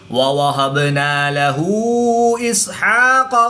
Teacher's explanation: الٹا پیش کے بعد حمزہ دوسرے کلمے میں ہے تو یہاں پر مد منفصل ہوگی، 2 سے 3 الف تک کھینچ کر پڑھیں گے